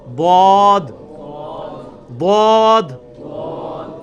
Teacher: ضاد یعنی لیفٹ زبان کا کنارہ اوپر کے دانتوں کی جڑ میں لگانا ہے, یا دونوں کو پیرلل میں دونوں کو بھی لگا سکتے ہیں.